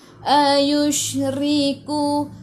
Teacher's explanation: shin ada sukun, bunyikan sh, tafashi, hambur.